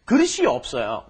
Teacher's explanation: Don't forget that S 받침 at the bottom of 그릇 needs to move up in front of E. So you would say 그릇이 없어요.